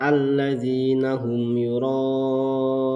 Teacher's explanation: mim sukun bertemu dengan ya ini juga harus dibaca dengan jelas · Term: izhar syafawi